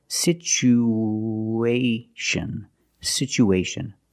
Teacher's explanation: we have two vowels together the U and the a we need to link these vowels with the sound w